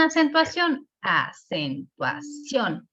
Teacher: nosotros mismos detectamos que la sílaba tónica en acentuación está en la última